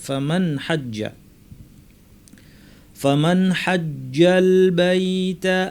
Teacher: তার মধ্যে একটা হচ্ছে হা, কণ্ঠনালীর মাঝখান থেকে আসে। এই 6টি হরফের কোনটি আসলে নুন সাকিনকে স্পষ্ট করে পড়তে হবে, গুন্না না বাড়িয়ে, স্বাভাবিক গুন্না রেখে পড়তে হবে।